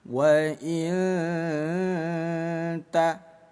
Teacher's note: Waina ta ada nun sukun bertemu huruf ta disebutnya ikhfa hakiki. Bunyi nun kita samarkan selama dua harakat sambil lisannya persiapan mengucapkan huruf ta. Wa nunnya jangan dibaca jelas wainta.